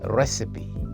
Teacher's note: The stress is on the first syllable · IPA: /ˈrɛsɪpi/